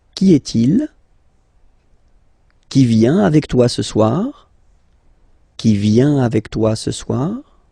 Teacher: you will have to raise your voice a little bit at the end of the question